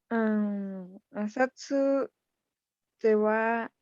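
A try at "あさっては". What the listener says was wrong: Casi, casi. No es Asatsu, porque el su es pequeño, no está grande. Entonces, ¿cómo queda? Asatte, asatte.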